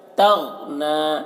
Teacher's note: غین میں آواز کو ٹکر نہیں مارنا ہے، قلقلہ نہیں کرنا ہے